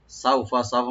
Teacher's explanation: সাউ এখানে হরফে লিন, সিনটাকে open রাখবেন, ফাতে কোনো টান নাই।